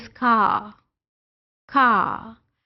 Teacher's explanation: r sound is not produced in British English. When word is ending at r sound, तो it is not produced in British English.